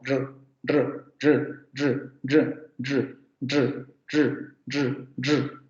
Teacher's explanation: Yo puedo decir, lo más cercano a este fonema sería algo así como r, r, r, r, r, r, r, r, r, r, porque es una vibrante simple, r, es una retrofleja, tengo que enrollar la lengua en la zona de los postalveolos, r, r, r, r, r, y tengo que hacer vibrar las cuerdas vocales.